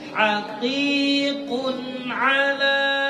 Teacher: Kun ada sedikit masuk ke hidung ya.